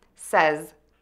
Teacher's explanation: start with s with the tip of your tongue behind your top teeth and the air moving out of your mouth. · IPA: /sɛz/